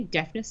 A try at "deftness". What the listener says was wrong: Deftness. Not deafness. Not like I can't hear you. deft, like with the T, because it is Deftness.